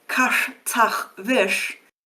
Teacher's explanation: you need to move your tongue from being bent back for that shy sound to being pushed forward to the T sound